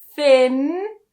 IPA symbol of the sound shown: n